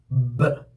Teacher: When you say B, please understand that it is a bilabial sound. The position of articulation of this B sound is bilabial. That means by using two lips. B. And how the air is coming out will tell you the mode of articulation, which is oral stop. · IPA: /b/